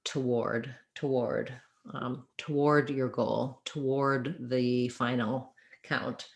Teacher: you can think of the two just getting reduced to a tah and then you can think of ward like the word war